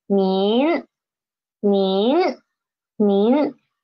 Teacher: This one is nin, ne yin nin. The initial is ne, and the final is in, and the tone is second tone.